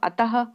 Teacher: तो अंत में हां की ही साउंड निकलती है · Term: विसर्ग